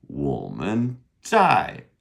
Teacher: We saw two dogs. 我们在, that's our DZ sound, pronounced ZAI, fourth tone